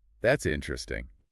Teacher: The mistake is only saying that's interesting with a really flat voice.